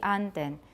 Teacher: In the Stockholm dialect, the word for duck has a high pitch early in the word, then it would be anden.